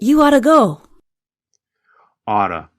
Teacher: the pronunciation changes when we talk faster ought to changes to OT